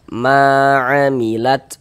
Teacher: Mad thobbi'i panjang dua harakat